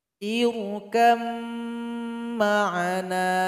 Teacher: Ba ini dan huruf mim tempat keluarnya sama. Sama-sama keluar dari dua bibir, namun sifatnya berbeda. Ba ini qalqalah, mim bukan qalqalah. Maka dia mesti dilebur kalau bertemu. Sehingganya ba ini telah bergabung dengan huruf mim. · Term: idgham mutajanisain